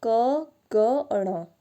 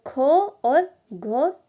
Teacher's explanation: क, ग और ण क्या है, अल्प प्राण है, और ख और घ क्या है, महाप्राण है